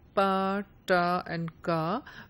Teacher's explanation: the English users of the subcontinent would produce these sounds as pa, ta and ka without the aspiration